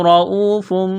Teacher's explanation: واو ساکن سے پہلے پیش ہے، حروف مدہ واو ہے، ایک الف کے برابر کھینچنا ہے